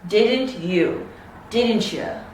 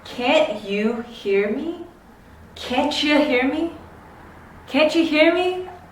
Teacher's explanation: words that end with a T and begin with a Y have a ch sound